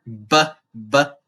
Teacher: the lips are hitting each other BB and popping like that